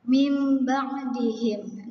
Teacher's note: nun mati bertemu dengan ba, maka di sini kalian bisa dengar jadi mim ba. Nah, di sini seperti ada huruf mim. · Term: iqlab